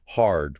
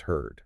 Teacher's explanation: With hard, your jaw drops open. Ah, but with her, your lips tighten and your tongue pulls back for that tight sound.